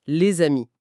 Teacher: à l'oral, un son « ze » apparaît de nulle part pour faire le pont. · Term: la liaison